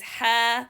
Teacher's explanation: letter ha is from the letters that opened, so no compression of the sound inside. The tongue is lowered, so no need to elevate the back of the tongue.